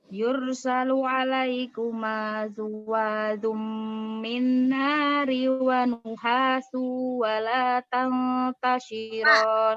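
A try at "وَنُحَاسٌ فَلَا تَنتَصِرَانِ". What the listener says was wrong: Wa nuhasung fala. Pakai fa sayang. Wa nuhasung fala. Wa nuhasung.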